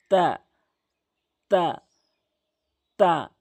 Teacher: জিহ্বার আগাটি নিয়ে সামনে দুটি দাঁতের গোড়াতে মিলাবেন। জিহ্বার আগাটি নিয়ে সামনে দুইটি দাঁতের গোড়াতে মিলাবেন, তা সঠিকভাবে উচ্চারণ হবে।